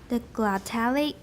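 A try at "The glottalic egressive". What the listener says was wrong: I still don't hear your k very clearly. The glottalic. You're going up and down, but you can just stay flat and then go up at the end.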